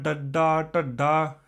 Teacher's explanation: ਠਠਾ ਠਠਾ ਬੋਲਦੇ ਆਂ ਪੁੱਠੀ ਹੋ ਕੇ ਤਾਲੂ ਦੇ ਨਾਲ